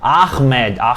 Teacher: em árabe, você tem aqueles sons guturais de Ahmed, esse som gutural que você não tem no português